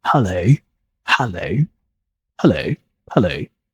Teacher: that O sound isn't simple I think this is a combination of two vowel sounds